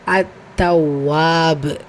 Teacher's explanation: பா கல்கலாவுடைய எழுத்துங்கிறதுனால கல்கலத்துல் குபுரா, பெரிதாக அசைச்சு முடிக்கிறோம்.